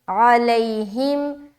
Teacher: ہا میم زیر ہم، علیہم، عین کو نکالیں گے حلق سے، لئی میں یا لین کر رہے ہیں، نرمی کے ساتھ جلد ادا کریں گے، بالکل سخت نہیں بنانا اور بالکل بھی لمبا نہیں کرنا · ع، لام یا زبر لی، علی، ہا میم زیر ہم، علیہم، عین کو نکالیں گے حلق سے ، لئی میں یا لین کر رہے ہیں، نرمی کے ساتھ